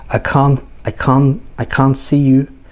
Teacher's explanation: Anyway, the T is silent, so it's I can't see you, and then next, oh, lazy language.